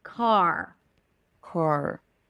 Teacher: The jaw is a bit more open. Lips are slightly rounded. Not as much.